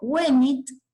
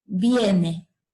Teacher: La E y la O breves del latín diptongaron.